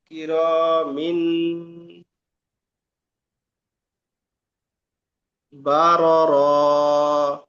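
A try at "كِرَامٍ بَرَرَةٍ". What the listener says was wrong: র টান হচ্ছে, আর এখানে কিরমিন নয়, মিম পড়তে হবে। তানবিনের পরে বা আসলে ওই যে ছোট মিম মাঝখানে দেয়া হয়েছে, মানে তানবিনকে বাদ দিয়ে ছোট মিমকে ধরে একালিপ গণনা করে পড়তে হবে, তাই না? কি র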